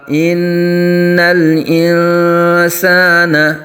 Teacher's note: نون مشدد میں ہمیشہ غنہ ہوتا ہے اور آگے نون ساکن کے بعد حروف اخفا میں سے سین آ رہا ہے.